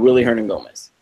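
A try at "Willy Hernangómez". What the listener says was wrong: It's Billy Hernan-Gomez. Yes, the W is actually pronounced as a B.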